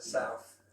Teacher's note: in Cockney, I'm putting an F there for South. The Alf is a larger vowel sound there, and then the F, so South. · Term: F sound